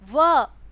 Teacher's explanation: दांत और होठ की दोनों की सहायता से बोले जाते हैं, इसलिए इसे दंतोष्ठ कहा जाता है